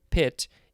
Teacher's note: in english the p of the word pit is an aspirate